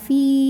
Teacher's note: Karena huruf ini adalah huruf ya sukun. Ya sukun didahului harokat kasrah, maka panjang fa-nya 2 harokat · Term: mad tabi'i